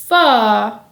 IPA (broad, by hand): f